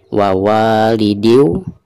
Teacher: Perhatikan ketika kita membaca wa yang kedua, wa, maka di sini dihukumi mad tabi'i dan dibacanya harus dipanjangkan 2 harokat ya